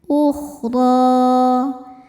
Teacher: Huruf ro dibaca tafkhim karena harakatnya di atas yaitu fathah. Cara bacanya ditebalkan.